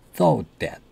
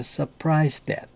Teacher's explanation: 이거는 thought that이 아니고 발음할 때 T가 두 개 겹쳤기 때문에 하나는 발음을 안 합니다.